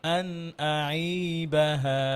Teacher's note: আইন আইন নরম করে, হ্যাঁ, যেন মোটা না হয়। আন আই পাতলা করে।